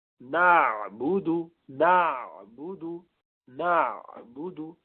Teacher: تو ساکن عین جب بولیں گے تو آپ کو ذرا لمبا کرنا پڑے گا, ہلکا سا, تو آواز ذرا تھوڑی دیر چلتی رہے گی, بہت لمبی نہیں لیکن تھوڑی دیر.